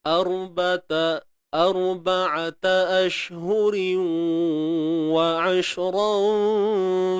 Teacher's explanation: Tanwin bertemu waw, idgham bi gunnah. Masuk terus.